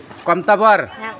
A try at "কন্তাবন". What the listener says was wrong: বর নয়, বন।